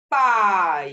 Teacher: inicia na vogal e termina na semivogal. Então, ele inicia forte e o som ele cai. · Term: ditongo decrescente